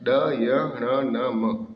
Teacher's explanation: इनका उच्चारण नासिक के साथ साथ कंठ, तालु, मूर्धा, दांत, ओष्ठ के स्पर्श से होता है, अतः इसे नासिक व्यंजन कहते हैं।